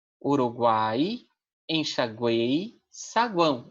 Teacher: nós teremos duas semivogais e uma vogal dentro da mesma sílaba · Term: tritongo